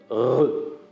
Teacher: on peut faire vibrer la luette contre le dos de la langue et on obtient ainsi un son comme R